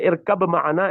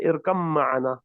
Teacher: you don't say irkab ma'ana, instead you say irkam ma'ana, because the makhraj is the same, mim and ba. Mim and ba are the lip letters.